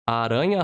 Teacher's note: R between 2 vowels gets the rolled R sound. · The double R gets the H sound from poha. And also the R at the beginning gets the poha sound.